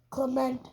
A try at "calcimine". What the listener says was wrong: That's not Clement. There's not even a T in there. No, it's C-A-L. No, you're saying C-L. It's C-A-L.